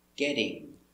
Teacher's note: So we see the T from get changes to a D for continuous action, getting.